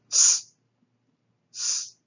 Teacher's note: It's a sibilant. It's a dental sibilant that is voiceless. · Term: sigma